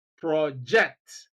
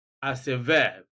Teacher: Now, in shifting stress, we have stress on the first syllable in the word project when we use it as a noun. But then we have stress on the second syllable of the same word when we use it as a verb